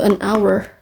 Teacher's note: Karena h-nya ini dihilangkan jadi bacanya hour gitu, an hour.